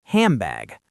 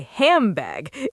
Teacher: And the N turns into an M. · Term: assimilation